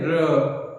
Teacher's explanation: जब हम र बोलते हैं र, तो देखिए कंपन सा महसूस होता है र, और तो इसीलिए उसको बोलते हैं प्रकंपित, यानी कंपन के आता है। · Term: प्रकंपित या लुंठित व्यंजन